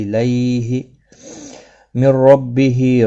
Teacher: را زبر کی وجہ سے پر پڑھا جائے گا، ہا کے نیچے کھڑی زیر ہے، ایک الف کی مقدار کے برابر کھینچ کر پڑھیں گے۔